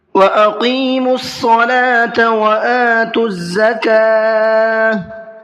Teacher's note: قاف کو منہ بھر کے پر کر کے پڑھنا ہے اور ساتھ ساتھ کھینچ کر کے بھی پڑھنا ہے